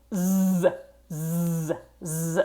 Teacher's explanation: we're making a vibration here in your voice box